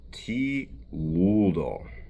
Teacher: we have a little bit of that Slavic coloration to the L with the back of the tongue coming up